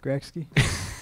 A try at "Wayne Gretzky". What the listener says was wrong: Okay, there's the K doesn't come before the T in Wayne Gretzky.